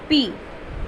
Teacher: Put the lips together. Relax them with the puff of air without vibrating your vocal cords.